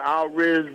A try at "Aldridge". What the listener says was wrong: Now, can you say Aldridge? Yeah, put that D in there. It's Aldridge.